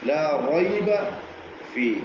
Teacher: നൂനിന്റെ മഖ്റജിനോട് അടുത്ത് അല്പം ഉള്ളിലുള്ള സ്ഥലം, ഏകദേശം മോണയുടെ അടുത്ത്, നാവിന്റെ അറ്റം മുൻപല്ലിന്റെ മുകളിൽ മോണയുടെ അടുത്ത് വെച്ചിട്ട് റ.